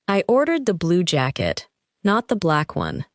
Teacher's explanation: I ordered the blue jacket, not the black one. The strongest words are blue and black, because the speaker is correcting a detail. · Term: sentence stress